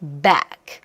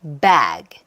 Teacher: back는 정말로 무성으로 끝날 때는 정내미 없이 떨어지는지, 그 다음에 bag는 뭔가 모음이 늘어지는 느낌이 있는지